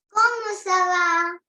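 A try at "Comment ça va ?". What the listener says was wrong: That doesn't make the proper pronunciation or proper sound. You have to use the rising tone.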